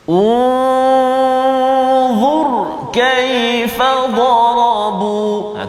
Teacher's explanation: Tu kalimah unzur, ra yang sukun, ra yang mati, sebelum dia huruf dha baris depan. Maka ra tu bunyi tebal, kena baca tebal. · Maka kedua-dua contoh yang kita datangkan ini ialah huruf ra mati sebelum dia baris depan, maka bacaan kita mesti kena tebal ataupun tafkhim.